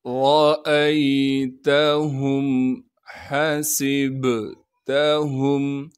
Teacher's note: را پر زبر ہونے کی وجہ سے را کو موٹا کر کے پڑھیں گے